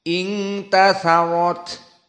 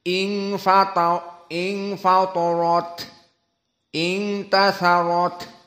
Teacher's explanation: harus dibaca dalam keadaan hams dikeluarkan nafas. Ing tatharat seperti sebelumnya ing fatarat ing tatharat dikeluarkan taknya.